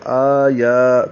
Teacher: آیا دونوں پر کھڑے زبر ہیں، دو دو حرکات لمبا کرنا ہے، ایک الف کے برابر